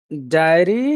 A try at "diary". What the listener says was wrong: You have to put that extra sound in there to separate the syllables. Otherwise, it's very hard to understand that word.